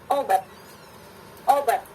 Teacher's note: Nah, sebelumnya itu ada glottal stop sebelum pada bunyi o. Jadi lokasinya seperti bunyi hamzah, obat, obat gitu ya, obat.